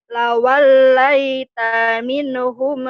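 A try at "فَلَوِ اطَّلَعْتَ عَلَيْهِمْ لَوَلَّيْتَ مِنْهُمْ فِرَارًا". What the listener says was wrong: Neng. Pendek lawal laita.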